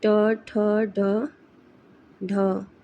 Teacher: हिंदी में मूर्धन्य ध्वनियाँ हैं